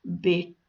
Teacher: in the word bete, you don't say the broad t sound which would normally be in that position, but bete because it's an English word adopted into Gaelic.